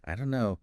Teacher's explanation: the don't and no just merge